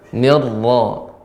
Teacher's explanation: Ya, tapi untuk pengucapan ra jangan sampai monjong Pak ya. Bukan nirrajim, akan tapi dengan dibuka. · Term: ra yang ditafkhimkan